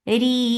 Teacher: this temporary sukoon has turned this 2 counts long vowel into 4. This is madarat sukoon.